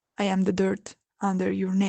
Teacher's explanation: she ends it in a breathy voice, with a sigh, clearly relaxed and trusting